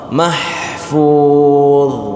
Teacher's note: ketika kita baca mahfuz, lidah kita itu melewati gigi seri. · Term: Huruf dha